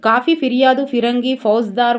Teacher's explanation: అన్య దేశ పదాలలో ఫ దంతోష్ట్యమే అవుతుంది